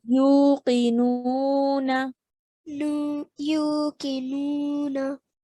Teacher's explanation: Okay, so waw mad over here and another waw madiyya over here. So stretching both the U sound and the Nu sound for 2 counts each